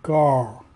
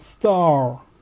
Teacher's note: это будет читаться таким знакомым для нас звуком А. А долгий.